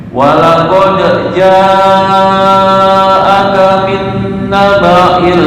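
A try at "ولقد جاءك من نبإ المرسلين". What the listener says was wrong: Min kurang lama dong ya.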